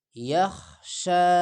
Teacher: یخشا، یخ یخ یخ ہوتا ہے نرم خا یخ، اور یہ ہے موٹا خا یخشا۔ شین پہ کڑا زبر ایک الف کی مقدار کھینچا جائے گا